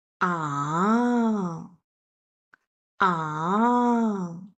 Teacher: falling down and then rising up like wow wow a thinking sound I was considering whether to